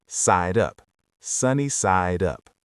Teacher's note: The D in side connects directly to the U in up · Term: connected speech